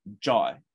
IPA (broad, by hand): dʒɔja